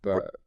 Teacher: your vocal cords down in your throat snap shut momentarily to choke off the airflow